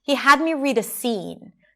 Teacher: So the he is reduced. Had is long and higher in pitch. Me is reduced again.